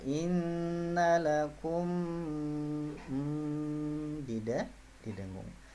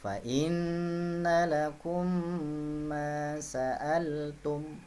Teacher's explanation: Jadi mim bertemu mim itu didengung, atau sering orang menyebutnya dengan idgham mi. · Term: idgham mimi